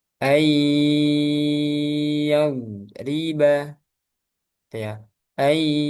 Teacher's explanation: Suara yang keluar dari hidung. Jadi sebagian suaranya keluar dari hidung. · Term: ghunah